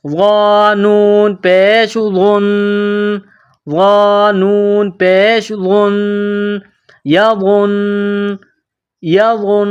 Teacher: نون مشدد جہاں بھی آ جائے تو وہاں پر غنہ کیا جائے گا۔ غنہ کہتے ہیں ناک میں آواز چھپانے کو، یعنی نون مشدد میں غنہ کریں گے، ناک میں آواز چھپائیں گے۔